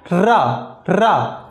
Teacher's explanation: आप अभी एक्सपेरिमेंट करके देखिए, रा बोल के देखिए, रा ये हमारी जीभ जो है अंदर जाके फिर लुढ़क के बाहर आती है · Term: लुंठित व्यंजन